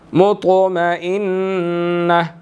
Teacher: طا یہاں پر ساکن ہے، قلقلہ ہوگا اس کے اوپر کیونکہ قلقلہ حروفوں میں سے بھی ہے اور موٹے حروفوں میں سے بھی ہے، یہاں پر ہم نے اس کو موٹا بھی کرنا ہے، ٹھیک ہے.